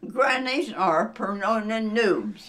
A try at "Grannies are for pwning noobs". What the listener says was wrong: You said pronounin' again. You'll get it.